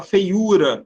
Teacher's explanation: Paroxítona, a penúltima sílaba é a sílaba tônica.